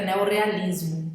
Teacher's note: Ao juntar tem que dobrar o R para dar o som de R, né? Aquele R alveolar.